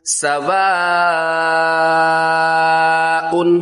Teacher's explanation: یہاں پر مد متصل ہو رہی ہے، کھینچ کے پڑھیں گے